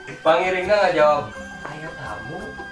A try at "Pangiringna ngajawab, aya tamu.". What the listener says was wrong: Kurang lentongna kurang mindai.